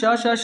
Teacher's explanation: भाई क्योंकि जब हम श श श का उच्चारण करते हैं तो हमारी तालु और हमारी जीवा आपस में टच कर जाती है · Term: ऊष्म व्यंजन